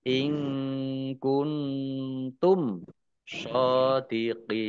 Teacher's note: In kuntum nun sukun bertemu dengan huruf kaf bacaan ikhfa. Kemudian nun sukun bertemu dengan huruf ta juga bacaan ikhfa dibaca samar-samar.